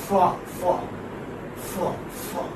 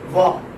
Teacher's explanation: the first one is voiceless and the second one is voiced